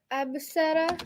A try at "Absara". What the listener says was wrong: Excellent. Absara, which is a real word.